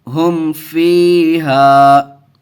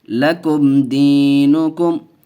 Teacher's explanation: ہم فیہا، دیکھیے میم ساکن ہے، میم ساکن کے بعد با اور میم کے علاوہ، دیکھیے اوپر بتایا تھا وا یا فا بالخصوص آئے تو یہاں فا آیا ہوا ہے، دیکھیے تو اظہار شفوی کا قاعدہ ہوگا، بغیر غنہ کے پڑھیں گے۔ ہم فیہا، ہا میم پیش ہم، فا یا زیر فی، ہم فی، ہا الف زبر ہا، ہم فیہا، یہاں یا ساکن سے پہلے زیر ہے، یہاں مدہ کا قاعدہ ہے، یہاں الف سے پہلے زبر ہے، الف مدہ کا قاعدہ، دونوں کو کھینچ کے پڑھیں گے۔